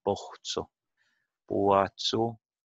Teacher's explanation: this diphthong in Boatsu is also monophthongoist. It's becoming a monophthong.